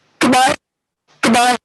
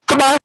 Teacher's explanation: it starts up very high in terms of pitch and drops very quickly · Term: dismissive goodbye